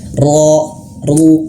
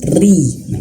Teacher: tapi kalau dia bertasydid itu ibaratkan dia hidup maka harus perhatikan kalau dia hidup ketika fathah dma itu harus tebal ro ru tebal tapi kalau kasrah dia tipis